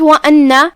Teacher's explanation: یہاں حمزت قطع ہے، ہم حمزت قطع کو ظاہر کریں گے اور اس کے بعد جو کہ نون پہ تشدید ہے تو ہم تشدید کو ظاہر کریں گے.